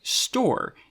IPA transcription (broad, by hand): stɔːɹ